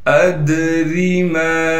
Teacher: دال ساکن ہونے کی وجہ سے دال پر قلقلہ کیا جائے گا